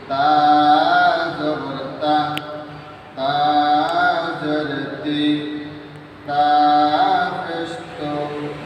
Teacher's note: আমরা খেয়াল করি তা দ্বিতীয় স্বাভাবিকভাবে জিহ্বার আগা সামনের উপরে দুই দাঁতের গোড়ার সাথে লাগিয়ে তা উচ্চারণ করতে হয়